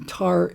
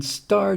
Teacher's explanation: tea in in tar is aspirated meaning it comes out with a puff of air the t in star doesn't have